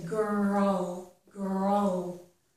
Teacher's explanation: when R is followed by L you can if you want you could add right here a little schah sound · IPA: ˈɡɜɹəl, / ˈɡɜɹəl /